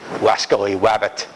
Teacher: where he can't pronounce R's, pronounces R's as W's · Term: rhoticism